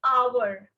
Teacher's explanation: Hour का मैं h pronounce नहीं कर रही, right? मैं h नहीं बोल रही.